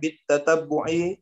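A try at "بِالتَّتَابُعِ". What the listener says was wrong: Bit. Jangan tasdid lah baknya. Bit tatabbu'i. Soalnya yang mau translate itu nanti Google-nya gak bisa kalau salah baca.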